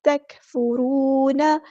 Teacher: واؤ مد آ گیا تو الف کے برابر ہم لمبا کریں گے